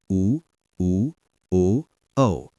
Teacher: जैसे आ स्वरों का भेद ओष्ठकृति के आधार पर वृत्ताकार होठों की आकृति वृत्त के समान